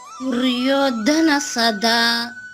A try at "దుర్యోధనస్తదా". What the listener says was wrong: ధనస్తదా. సాకి తావుతుంది కింద. సదా అంటారు, లేదంటే తదా అంటారు. రెండు కలిపనండి. స్తదా. తదా ముందు సా రావాలి, తర్వాత తా రావాలి.